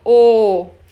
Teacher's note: Quando a vogal é longa, quando o O é longo, ele também é fechado.